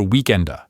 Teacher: Italians will instinctively add this little soft vowel sound to the end, just to make it fit the natural flow. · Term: schwa